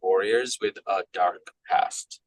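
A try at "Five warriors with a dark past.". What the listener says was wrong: Yeah, that flows a little bit better. Nice, good.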